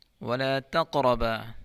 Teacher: قاف میں قلقلہ ہے اور پر پڑھیں گے، را کو بھی پر پڑھیں گے۔